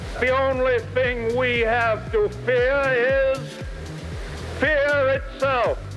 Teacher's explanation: dropping the r at the end of fear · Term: mid-atlantic accent